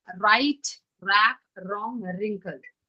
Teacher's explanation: When W R comes together, W remains silent and you can hear the sound of letter R, which is ra.